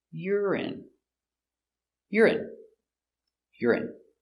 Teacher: Yur I I urine stress on the first syllable.